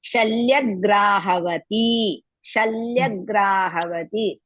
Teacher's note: Then Shalyagrahavati, Shalyagrahavati, Sha, La is half, Ya, Shalya, all are Hrisva, Gra, Dirga, Havati, Ha, Va, Hrisva, Ti, Dirga